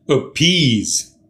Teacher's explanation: Two-syllabled, the second syllable is stressed. Appease. Also note, it's the long E sound.